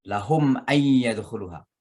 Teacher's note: Lahum ay, itu namanya izhar mimi, jadi jelas bacaan mimnya.